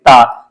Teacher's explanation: ता ता जब बोलेंगे तो आपकी जो जिव्या है आपकी दांत को जरूर स्पर्श करेगी तभी आप ता बोल पाएंगे